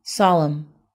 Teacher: the word stress is on the first syllable